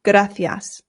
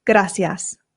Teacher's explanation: here in Spain, they pronounce the C's with a th sound